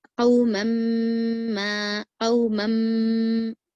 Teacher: मीम पर तजदीद है इसीलिए हमको गुन्ना करना है